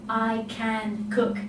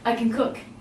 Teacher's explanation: And it sounds like it's almost one word. We string the 3 together, sounding like 1.